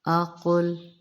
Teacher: قاف کو پر پڑھیں گے لیکن لام کو موٹا نہ کر دیجیے گا